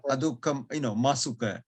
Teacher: Adukha and asukha, because there are two vowels, M comes in between to pronounce it easily.